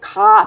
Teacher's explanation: 가 발음할 때 혀가 올라와서 목구멍을 꼭 막는 것을 볼 수가 있습니다.